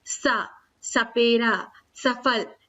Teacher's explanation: अब जो दंत हैं यानी दांत से जो बोले जाते हैं वर्ण, दांत के प्रयोग से, दांत के स्पर्श से, वो है तावर्ग, त, थ, द, ध और न, और इनके अलावा ला और सा जब बोलते हैं तो भी इनका उच्चारण करते समय हमारी जो पूरी जीभ का हिस्सा है आगे का गोलाकार, वो आगे के दांत से जुड़ता है। सा, सपेरा, सफल, ऐसे बोलते हैं।